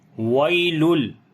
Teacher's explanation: یا یہاں پر لین ہے، نرم پڑھیں گے